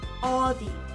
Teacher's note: H-O con una O más abierta y D-I, ODI